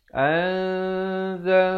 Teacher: Tapi bila datang zai, disembunyikan bunyi nun matinya di belakang zai itu dengan kadar 2 harakat. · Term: hukum ikhfa